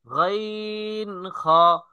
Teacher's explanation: তিন নাম্বার মাখরাজ, হলকের শেষ ভাগ হইতে গাইন খ